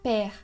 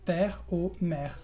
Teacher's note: El segundo sonido de la E es E. Entonces es una E pero más relajada con la boca abierta. Entonces, E.